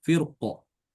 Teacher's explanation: Kalimat firqin, kalau dia diwakafkan itu dibaca tebal ya.